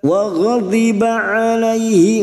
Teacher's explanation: alaihi fathah bertemu ya sukun, huruf layin kita lunakkan